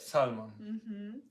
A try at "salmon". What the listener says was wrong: Salmon. You just changed the stress to the first syllable. Salmon.